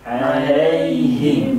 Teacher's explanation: Fathah bertemu dengan ya sukun. Nah ini seringkali pengucapan ya-nya tidak terdengar jelas ya.